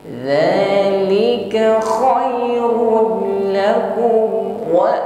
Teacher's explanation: pertemukan ujung lidah dengan ujung Gigi saya di atas tidak disertai dengan Hames atau berdesis bukan Z ya ujung lidah sedikit keluar ya tertahan bunyi hamesnya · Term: huruf da